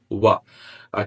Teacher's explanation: Two lips almost together, not completely together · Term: approximants